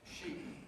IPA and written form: ʃiːp (sheep)